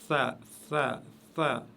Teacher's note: elle se prononce avec la langue juste derrière les dents, vers le haut, les dents de devant et du haut. Ben vous venez mettre la langue juste là-bas à l'extrémité, comme vous pouvez le voir sur l'écran, à l'extrémité, la flèche montre là où vous mettez la langue. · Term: la lettre tha